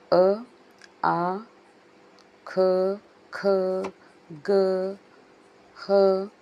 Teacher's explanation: ಇವು ಕಂಠಯಾಕ್ಷರಗಳು ಈ ಕಂಠದಿಂದ ಜನಿಸುವಂತಹ ಅಕ್ಷರಗಳಾಗಿವೆ